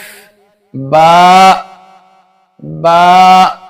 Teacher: با دونوں ہونٹوں کے تر حصے سے ادا ہوتا ہے